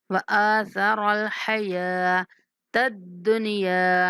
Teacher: حمزہ کو کھینچنا ہے، سا کو نرمی سے، را کو موٹا پڑھنا ہے